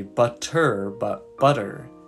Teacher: I like to think of it as a soft t or d sound in American English words like butter or muddy